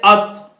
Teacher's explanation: اس کی جو ادائیگی ہے زبان کی نوک اور اوپر کے سامنے کے دانتوں کی جڑ سے ادا ہوتا ہے